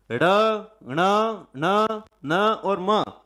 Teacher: पांचवा वर्ण जो बोला जाता है वो नाक से बोला जाता है। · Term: नासिक्य वर्ण